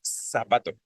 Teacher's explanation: nosotros decimos zapato y ponemos la la lengua donde les decía no en la parte inferior de los dientes como si fuera una s